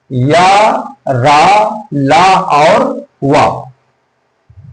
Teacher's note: जीभ, तालु, दांत और होठ के परस्पर सटाने से इनका उच्चारण होता है, लेकिन कहीं पूर्ण रूप से स्पर्श नहीं होता, इसलिए इन्हें अंतस्थ व्यंजन कहा जाता है।